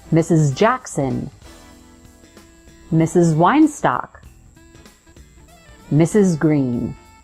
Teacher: That final S is actually representing the sound Z, so it buzzes. Your vocal folds or vocal cords vibrate.